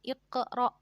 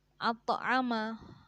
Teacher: Nah, seperti itu harus dibaca qalqalah sughra, memantul, terang dan tetap memantul.